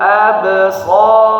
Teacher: abnya jangan terlalu kuat pantulannya, ini di tengah-tengah kecil saja.